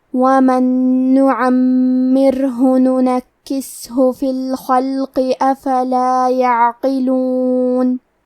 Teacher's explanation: کلمت الخلق میں حرف الخا کی ادائیگی حلق کے اوپر والے حصے سے ہے. خا حروف تفخیم میں سے ہے تو ہم یہ حرف کو موٹی آواز میں پڑھیں گے. پھر یہاں لام ساکن ہے تو ہمیں لام کو ظاہر کرنا ہے.